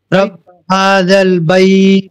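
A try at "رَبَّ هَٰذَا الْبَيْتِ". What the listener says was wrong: বাইতি আছে, বাইতি থামার জন্য বাইত, এটা মাদ্দে লিন। নাম- একালিপ না, একালিপের বেশি হবে এটা, ঠিক আছে? 2 আলিপ, 2.5 আলিপ অথবা 3 আলিপ পড়ার যে মিকদার আছে, আমি যে পদ্ধতিতে পড়বো, তার তিল যদি পড়ি তাহলে তার তিলের মতো, তার দুবির পড়লে তার দুবিরের মতো, হাদার পড়লে হাদারের মতো।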